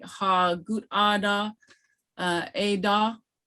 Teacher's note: Haw with the diacritic that goes up and your voice inflection goes up is a question.